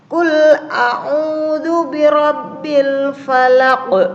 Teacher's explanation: Falaq, dia mati meskipun di situ ada harokatnya, tapi dia di akhir kalimat waqaf. Nah, itu bisa dibilang dikatakan qalqalah kubro.